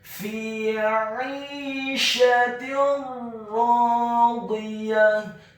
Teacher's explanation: huruf ra-nya ditasydidkan isti'la wa tafkhim, bergetar dan tebal. Dibaca tafkhim tebal fathah 2 harokat karena setelahnya ada alif. · Dalam hal ini adalah huruf ra yang tasydid dan fathah 2 harokat, maka hukum bacaannya adalah memasukkan dengan tanpa dengung. Idgham bila gunnah.